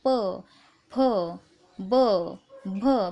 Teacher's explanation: प, फ, ब, भ बघा ओठांचा स्पर्श होतो, दोन्ही ओठांचा स्पर्श होतो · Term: ओष्ठ्यवर्ण